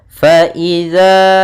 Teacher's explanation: Hukum tajwidnya yaitu ikhfa lagi, yaitu tanwin bertemu dengan huruf fa. Cara membacanya langsung disamarkan ke fa. Faiza, kemudian pada lafaz za ada mad tabi'i.